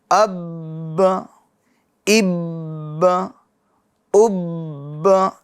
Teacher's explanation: جیسے میں پڑھ کر بتاتا ہوں، حمزہ با زبر اب، با زبر با، اب، اب دیکھیے یہ جمع ہو رہا ہے، آواز مخرج میں کچھ دیر کے لیے رک رہی ہے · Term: جماؤ